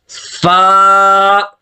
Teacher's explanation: یہ اوپر والے جو دانت ہیں، یہ ہونٹ کا جو خشک حصہ ہے، ایک ہونٹ کا تر حصہ ہوتا ہے، خشک حصے پہ لگتے ہیں تو یہ فا ادا ہوتی ہے